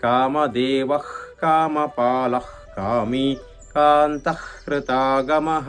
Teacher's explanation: సో గొంతు నుంచి శబ్దం రావాలి, దాన్ని జిహ్వామూల్యం అంటాం.